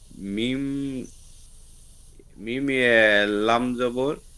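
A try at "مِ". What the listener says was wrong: লাম হবে? এটা লাম তো বাম দিকে থাকে, এটা কি?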